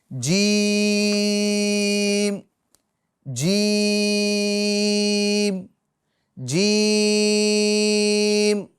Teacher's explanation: अच्छा इस हरफ को अदा करते वक्त जो जबान का बीच वाला हिस्सा है और तालु ऊपर वाले हिस्से को तालु बोलते हैं। तो बीच जबान को बीच तालु में लगाइए। तो ये हर्फ अदा होगा।